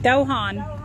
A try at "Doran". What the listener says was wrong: Not Dohan. It's technically an R, but it's said the French way, so none of us can actually say it right.